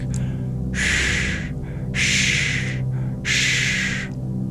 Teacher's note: the retroflex sibilant, which is formed by curling your tongue back.